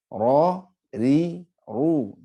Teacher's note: Jadi ro itu memiliki sifat takrir. Takrir itu bergetar, tetapi harus disamarkan getarnya. Kalau dihilangkan jadinya lam.